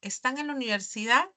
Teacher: Si yo digo están en la universidad, pues mi intonación es inflexión de nuestra voz va a ascender · Pues mi entonación, esa inflexión de nuestra voz va a ascender, ¿no? Es una pregunta, una interrogativa directa, total, ¿no?